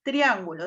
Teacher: Triángulo se acentúa en la antepenúltima sílaba y lleva tilde. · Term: Esdrújulas